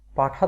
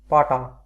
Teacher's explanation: ঠ হচ্ছে মহাপ্রাণ, ট হচ্ছে অল্প প্রাণ